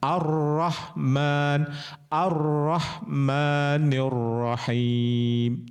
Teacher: Nah, kalau di arrahmanirrahim itu huruf L-nya enggak ada dimasukkan ke huruf ro ya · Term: idqam syamsiyah